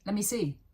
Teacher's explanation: Another dropped sound could be let me, lemme, which sounds crazy.